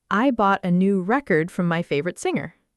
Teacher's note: As a noun, record means a music album or an official document. Stress on the first part.